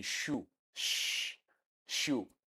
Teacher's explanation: It is produced after the alveolar. That's why we call it post-alveolar or palato-alveolar, between hard palate and alveolar ridge. So that is palato-alveolar or post-alveolar.